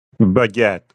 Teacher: It's pronounced almost like it looks, baguette, with a little emphasis on the second syllable.